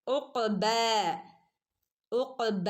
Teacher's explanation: ഖാഫ് കൽക്കലയുടെ letter ആണ് അല്ലേ, full സുക്കൂന് കൊടുക്കണേ